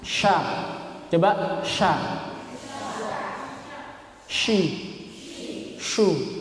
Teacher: kalau shin ini mempunyai sifat tafasyi, yaitu menyebar. Mulut ini menyebar.